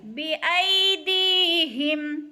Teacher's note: یالین کھینچنا بھی نہیں ہے، جھٹکا بھی نہیں دینا ای کو۔ بایدیہم، اور دی کو کھینچنا ہے اس لیے کہ یا ساکن سے پہلے دال کے نیچے زیر ہے تو یا مدہ ہو رہا ہے، تھوڑا سا لمبا کر کے پڑھنا ہے، یعنی ایک الف کے برابر۔